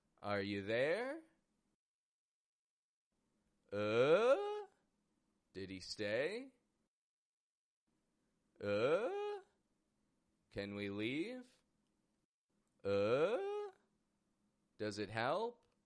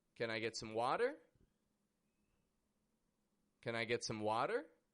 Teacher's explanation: Are you, did he, can we, is it, did you, do you, medium in pitch. And then the final word raises up in pitch 2 octaves. This is called upspeak.